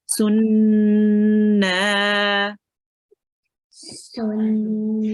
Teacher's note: I make the noon sound, the gunna sound, the nasal sound when I'm reading this, and I'm staying on it. Okay, I'm prolonging it as well.